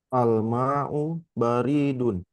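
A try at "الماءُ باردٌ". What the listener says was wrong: Banyak panjang. Baridun.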